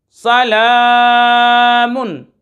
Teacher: सलामुन, सलामुन, सीन ज़बर सा, लाम खड़ा ज़बर ला, सला, मीम दो पेश मुन, सलामुन। लाम के ऊपर खड़ा ज़बर है, खींच कर पढ़ेंगे।